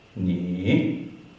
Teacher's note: Third tone, going down and up.